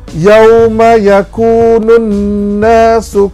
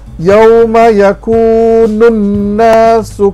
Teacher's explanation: alif lam tidak disebut Nun terus bersambung dengan Nun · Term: alif lam syamsiyah